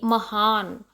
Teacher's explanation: हम जब महान बोलते हैं तो हाँ को थोड़ा लाउड बोलते हैं